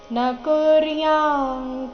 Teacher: ಪೂರ್ತಿಸಿ ದೀರ್ಘ ಇದೆ ಉತ್ಸೀದೆ ಯುರಿಮೆ ಯುರಿಮೇ ಲೋಕ ನ ಕುರ್ಯಾಂ ಕರ್ಮ ನಕುರ್ಯ ಅನುಸ್ವಾರ ಇಲ್ಲಿ ಕ ವರ್ಗದ ಅನುನಾಸಿಕ ಗ ರೀತಿ ಉಚ್ಚಾರಣೆ ಮಾಡಬೇಕು ನ ಕುರ್ಯಾಂ [ಪ್ರಶಂಸೆ] ಕರ್ಮಚೇದಹಂ ಸಂಕರಸ್ಯಚ ಕರ್ತಾಸ್ಯ ಸಂಕರಸ್ಯ